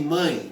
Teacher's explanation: a vogal tá tentando sair pelo nariz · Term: nasal